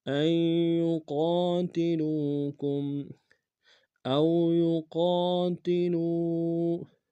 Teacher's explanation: او میں واولین ہے بغیر کھینچ پڑیں گے، یقا میں قاف الف مدہ کے کنارے میں کھینچیں گے، لام کو واو کے سامنے آئیں گے، واو مدہ کے کنارے میں کھینچیں گے۔